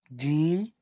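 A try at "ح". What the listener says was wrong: No, Jim has one dot. There is no dot with this letter. This ha.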